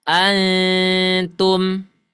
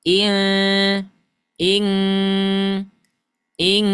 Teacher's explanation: nun sukun bertemu dengan huruf ta itu akan beda kadar suara ikhfanya dengan nun sukun bertemu Kaf